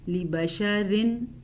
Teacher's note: تو میں نے بتایا کہ لام زیر لی، اس کو لمبا نہیں کرنا، لی بشرن، را کے نیچے زیر ہے تو را باریک پڑھیں گے